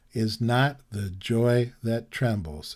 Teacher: the joy that trembles in other words it's the opposite emphasis it starts with an unstressed syllable rather than a stressed syllable